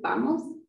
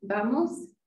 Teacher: And so vamos is bilabial, where you use both your lips to make that sound, versus vamos, where your teeth touch your lips.